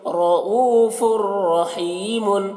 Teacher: را کو پور پڑھ رہے ہیں کیونکہ را کے اوپر زبر ہے. یہ او یہاں پر واو مدہ ہے, تھوڑا کھینچ رہے ہیں